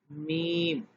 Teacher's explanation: ناک سے بھی میم کی آواز آتی ہے، اس کو نرمی سے پڑھا جاتا ہے